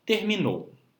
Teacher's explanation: E o nosso último grupo de palavras, nós temos o grupo das palavras oxítonas, que são aquelas palavras que possuem como sílaba tônica, ou seja, a sílaba que nós pronunciamos com mais força, a última sílaba como em terminou